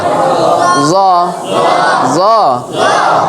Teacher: জিহ্বার আগা থেকে নরম ভাবে মোটা